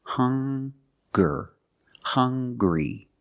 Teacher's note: Also, we have these two words, hungry and hunger. They also make the same sound with the nasal sound and the hard g.